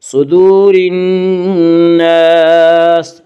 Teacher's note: صدور الناس، وا مدہ وہ واو جو ساکن ہو اور اس سے پہلے پیش ہو، وا مدہ کو ایک الف کے برابر کھینچ کر پڑھیں گے